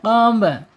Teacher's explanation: secara makhraj ba ini ada di asyafatain ya. Asyafatain atau dua bibir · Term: ba sukun